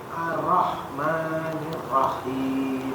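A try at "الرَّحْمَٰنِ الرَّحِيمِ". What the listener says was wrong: Kurang ditekan Pak ro-nya. Sebenarnya kalau tasdid itu kan ditekan dan ditahan. Ya, ditekan dan ditahan. Jadi tidak perlu buru-buru juga. Ar-Rahman gitu.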